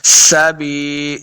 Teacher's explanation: سین پہ سیٹی کی آواز آئے گی